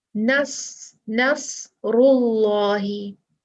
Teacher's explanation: देखिए नस्रुल्लाहि, इसमें क्या है, इसमें अल्लाह सुब्हानहू व तआला का नाम आया है और उसके बाद रा, रा पे दम्मा है, पेश है, तो लफ्जुल जलाला जो है वो मोटा पढ़ा जाएगा, भारी पढ़ा जाएगा।